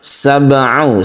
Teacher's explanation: Sab'u ain ya. Ain itu berada di tenggorokan agak ke atas